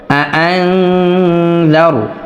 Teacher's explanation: তো নুন সাকিনের পরে এখানে জাল আসছে, জাল ইখফার হরফ, এজন্য আমরা ইকফা গুণনা করব। আং জার, আর রটাকে অবশ্যই পোর করব, কেননা র সাকিনের পূর্বের হরফে জবর আসলে অবশ্যই পোর করে পড়তে হবে।